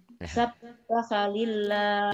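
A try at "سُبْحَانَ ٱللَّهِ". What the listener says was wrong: Jangan subhan, subhan. Jangan dibentak. Jangan dibentak, kasihan Qur'annya.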